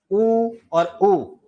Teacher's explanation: देखो होठ सक्रिय होते हैं। इसलिए उ और उ का उच्चारण स्थान क्या है? ओष्ठ है।